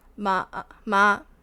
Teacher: level sound naturally prolonged